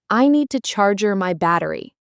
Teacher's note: In natural speech, charge your often sounds like charger. The deej sound and the y sound blend together. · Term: linking